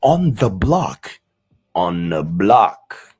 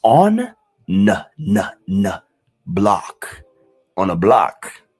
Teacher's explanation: But you barely hear the th in the word the.